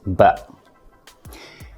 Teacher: it's a bilabial sound which means you use both of your lips to produce the sound